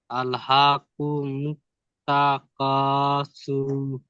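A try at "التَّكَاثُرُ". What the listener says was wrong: এই সুর, এই যে এই সুর যেটা টান দিচ্ছেন, এটা টান হবে না। রর উপর সাকিন হয়ে যাবে, এই পেশ এসে সাকিন হয়ে যাবে। সা র পেশ সুর।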